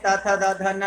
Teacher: इनका उच्चारण स्थान दंत है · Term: ता वर्ग